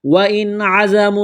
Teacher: پر غنہ نہیں کریں گے، آواز ناک میں نہیں چھپائیں گے، زا میں سیٹی کی آواز پیدا کریں گے · نون ساکن کے بعد عین ہے، حروف حلقی ہے تو یہاں پر غنہ نہیں کریں گے، آواز ناک میں نہیں چھپائیں گے